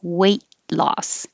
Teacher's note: So in the combination weight loss, there's no connection. Your tongue goes up for the T, weight, and hold it there and release it for the L